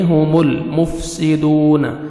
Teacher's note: ہم میم ساکن کا اظہار ہے جلدی پڑھیں گے، ہم المفسدون لام کے ساتھ آپ نے ملانا ہے اور لام کو آپ نے ہلانا نہیں ہے ، مفسدون واو مدہ دال کو 1 سیکنڈ آپ نے کھینچنا